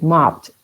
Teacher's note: Porque el verbo termina en P. Cuando tenemos un verbo que termina así en P como help, ayudar, la ED se pronuncia como una T.